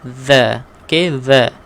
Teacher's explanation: keluarkan hujung lidah bertemu dengan gigi kacip atas